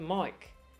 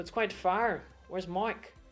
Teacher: we're going to change those I's to more of an OI sound, an OI sound, as you would see in, say, words like oil.